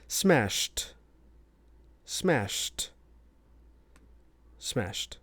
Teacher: we're looking at those voiceless sounds at the end of our verbs that make those past tense regular verbs into a t sound with that e d.